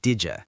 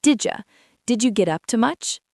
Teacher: The D and the Y push together to make a J sound.